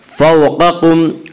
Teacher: फ़ौक़कुम क़ाफ़ को पुर पढ़ेंगे। क़ाफ़ हुरूफ़ मुस्तालिया में से है। हुरूफ़ मुस्तालिया 7 हैं जिनका मजमुआ खुस्सा ज़ब्त तनक़ीज़ है जो हमेशा हर हाल में पुर पढ़े जाते हैं।